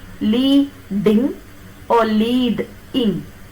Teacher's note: When you say lead-ing, the syllabic division comes after d. When you say li, ding, the syllabic division comes after e, li, ding, second one.